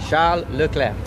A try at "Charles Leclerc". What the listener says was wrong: Yeah, exactly. The R, you need to train a little bit still, but yeah.